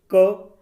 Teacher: क, गले पे जोर पड़ रहा है, क सिर्फ कंठ का यूज हो रहा है।